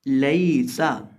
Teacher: अब ये जो हमारे पास पहला लफ्ज़ है इसके अंदर कुल 3 हरूफ हैं, लाम, या, सीन। अब ये जो या साकिन है इससे पहले ज़बर है, इसलिए यहाँ हम या को बिना खींचे पढ़ेंगे